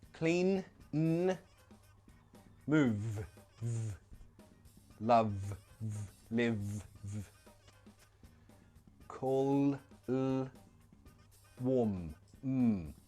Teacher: all of these, they produce a vibration in the throat, so they are all voiced sounds.